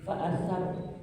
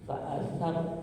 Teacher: Fa'asar. Hukumnya ro yang dibaca tafkhim, tebal karena sebelumnya diawali dengan fathah.